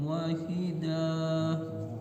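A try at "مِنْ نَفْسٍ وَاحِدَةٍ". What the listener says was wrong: Wahidah langsung, enggak panjang.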